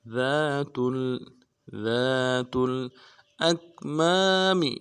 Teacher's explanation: ذال کے بعد الف مدہ ہے، ایک الف دال میں کھینچیں گے، ذال کو باریک کریں گے، تا کو لام کے ساتھ ملانا ہے.